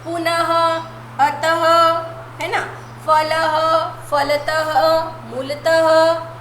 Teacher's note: विसर्ग हुआ, जिसका उच्चारण हम ह के माध्यम से करते हैं।